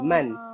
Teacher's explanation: Man dia tak boleh masuk dalam alif tu. Nun tu dia kena jelaskan.